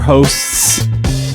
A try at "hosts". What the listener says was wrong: Did you forget the T in hosts? So yeah, hosts.